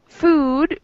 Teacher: we have our lips in a small round shape